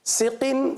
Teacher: سقن یہاں پر اظہار کا قاعدہ ہوگا, غنہ نہیں کریں گے